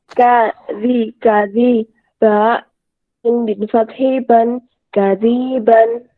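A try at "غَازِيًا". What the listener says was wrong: Sekali lagi coba diulangi, ada yang salah panjang pendeknya. Ya, di situ ada kesalahan Bu ya. Jadi kan yang atas itu kan, yang pink itu kan ada ya madu tabi'i. Nah, nanti ketika pindah ke kotak bawahnya itu harus diperiksa anak-anak, jangan sampai dipanjangkan.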